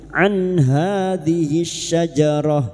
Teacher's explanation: tabi'i, an hadhihi syajarah, an nun sukun bertemu ha idhar halqi, nun sukun dibaca jelas tanpa mendengung